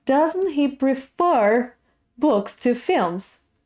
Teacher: the questions in English, they have this rising and falling and rising again intonation